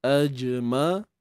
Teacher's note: huruf Ain yang mana makhrajnya berada di tengah kerongkong